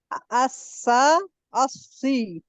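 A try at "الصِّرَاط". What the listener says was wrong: नहीं सा नहीं, अस्सौ, सौ, शाबाश, महसूस कर रहा है आप, डिप्रेशन महसूस हो रहा है ना, जबान आपको लगा कि ना दरमियान में कोई ऐसा है, कोई बॉल जैसी कोई चीज है, कोई चीज है जो नीचे की तरफ आपको पुश कर रही है,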